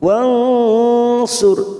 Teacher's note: ra sukun kita baca tafkhim karena didahului dhammah